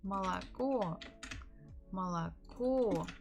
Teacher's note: The stress on the final O.